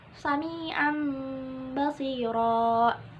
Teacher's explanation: Tanwin bertemu dengan huruf ba, maka dia menjadi mim. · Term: iqlab